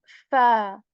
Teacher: we put the tip of our upper teeth to the lower lips and, we remove the air from our mouth to say this letter fa